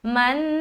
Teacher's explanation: آگے غنہ کا بھی جو مقدار ہے نا وہ ایک الف ہے تو ایک الف کی مقدار ہم ناک میں آواز کو روکیں گے. من دونوں جگہ ہم نے غنہ کیا.